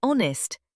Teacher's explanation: We say honest. The H is silent again.